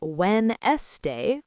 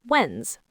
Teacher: We don't say Wen-es-day, we crush that N and S sound together, so Wed-nes becomes just Wens.